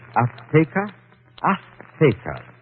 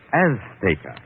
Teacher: She gave the Z a TH sound. That's Castilian Spanish. Mexican or any Spanish American would say Azteca.